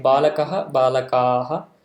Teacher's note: masculine it will be long vowel at the end and a visarga